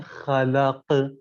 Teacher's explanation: اس کے بعد والی مثال خلق، اب یہاں کے اوپر خلق جب ہم کہیں گے تو یہ استعلا ہے خلق، لیکن پھر ایرو کے بعد جو لفظ لکھا ہے خلق، اب یہاں کے اوپر حرف قاف ساکن ہو گیا تو یہ قلقلہ ہو گیا